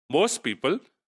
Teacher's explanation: The t sound of most is deleted. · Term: alveolar stops are omitted